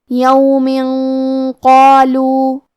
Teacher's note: ہم یہ تنوین کو چھپاتے ہوئے اور غنہ کے ساتھ یہ حکم کو ادا کریں گے۔ کیونکہ قاف حروف تفخیم میں سے ہے اور غنہ اپنے اگلے والے حرف کا حکم لیتا ہے تفخیم میں اور ترقیق میں، لہذا ہمیں یہ غنہ کو بھی بھاری آواز میں ادا کرنا ہے۔